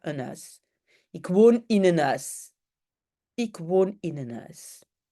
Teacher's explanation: mais en fait je ne prononce pas la h